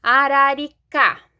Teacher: última sílaba que é mais forte portanto uma palavra oxítona